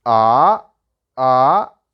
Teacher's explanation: the second tone is like from below to up